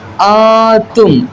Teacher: اخفاء ہوگا یعنی غنہ کریں گے ہلکا سا